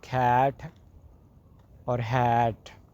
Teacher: next one is low vowel ash, which is used in sound as cat or hat